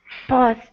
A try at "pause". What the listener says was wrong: Okay, open your mouth more. You're saying pause. It's not po, it's pause.